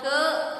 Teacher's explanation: देखिए इधर क अक्षर उच्चार करने में हमें अ भी सुनाई देता है। जब हम क बोलते हैं तो तब अ अक्षर भी सुनाई देता है